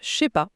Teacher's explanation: Mais dans la rue, la bouche cherche le chemin le plus court. Le ne disparaît, le je fusionne avec le c'est, et pam, ça devient un expéditif « je sais pas ». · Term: économie de langage